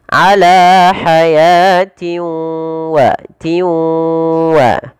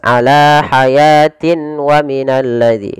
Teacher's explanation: Kemudian pada lafal tanwin kasratain bertemu dengan huruf waw, ini kita hukumi dengan bacaan idgham bi gunnah. Cara membacanya yaitu memasukkan tanwin ini kepada huruf waw